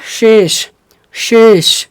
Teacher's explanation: तलाब भी श में और मुर्धन्य श में क्या बोलना है जीभ को थोड़ा सा आगा रखना है मुर्धा की तरफ